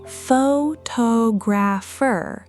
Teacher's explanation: notice the stress has already shifted to the second syllable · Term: stress shift